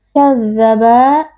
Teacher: zal yang bertasydid dibaca dengan sifat rakhawah atau dengan lunak,